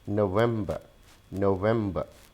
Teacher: So I'm not pronouncing an R.